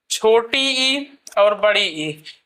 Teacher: छोटी इ और बड़ी ई यह दोनों जो है तालव्य से बोले जाते हैं।